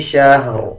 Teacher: شہر جب وقف کریں گے تو را کے دونوں زیر سائلنٹ کر دیں گے اور را کو پر یعنی موٹا پڑھیں گے. اس میں آپ نے یہ خیال رکھنا ہے کہ شین کے بعد جو ہا ہے اس کو شین کے ساتھ ملا کے پڑھنا ہے.